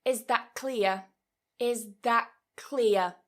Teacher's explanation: So notice I'm changing that T into more of a K sound. I'm pronouncing it back here. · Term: assimilation